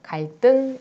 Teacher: 한자어, 갈등은 한자어죠. 한자어인데 받침 리을이 그 뒤에 있는 디귿, 시옷, 지읒을 만날 때 그 뒤에 있는 디귿, 시옷, 지읒을 된소리로 발음한다 라는 거예요. 그래서 갈등 이렇게 발음을 합니다.